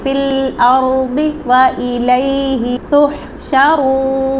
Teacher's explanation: یہ دال اور زا نہیں بلکہ ضاد مستعلیہ لیٹر ہے، اس کا اپنا مخرج ہے